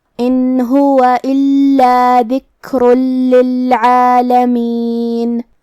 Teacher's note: عین کو ہم حلق کے درمیان والے حصے سے ادا کریں گے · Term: حرف العین